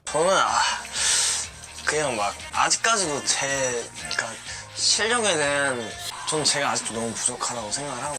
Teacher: he also has a tendency when he talks to squish his words together. And at the same time as he does that, he'll lower and raise his intonation. So that combined with his deeper voice can make it a bit more difficult to follow along.